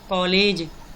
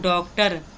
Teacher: आ तथा ओ के मध्य की ध्वनि ओ के रूप में होता है। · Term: अर्धचंद्र